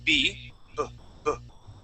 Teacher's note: when you pronounce a b the vibration happens here in your throat it's a voiced sound